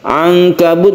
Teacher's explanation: Ankabut nun mati bertemu dengan Kaf kita baca ikhfa